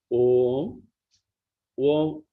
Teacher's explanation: O has 2 matras. That means it takes 2 seconds to pronounce. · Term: Omkara